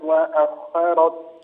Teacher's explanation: مفخم الخاء والراء معا